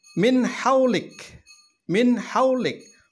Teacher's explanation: Nun mati bertemu dengan huruf ha. Huruf ha adalah salah satu dari huruf izhar, maka nun matinya dibaca jelas.